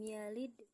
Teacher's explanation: qalqalah sugro karena huruf dal sukun berada di tengah kalimat. Pantulannya tipis